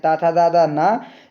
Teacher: इनका उच्चारण स्थान है वो है आपका दंत